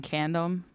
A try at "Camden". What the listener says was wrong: It sounded like condom when you said that.